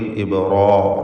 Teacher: ഇബ്രാഹിം എന്നതിൽ ബായിൻ്റെ സുക്കൂൻ ഖൽഖല സുഗ്റ നൽകി ശബ്ദം ചലിപ്പിക്കുക. റായിനും അലിഫിനും തഫ്ഖീം. ഇബ്റാ, റാ എന്ന് തടിപ്പിച്ച് പറയുക.